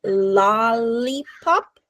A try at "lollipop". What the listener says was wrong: Okay, so I heard it at the beginning, but then I think your tongue went down.